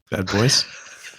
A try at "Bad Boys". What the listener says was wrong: The emphasis is weird. Bad Boys. Bad Boys.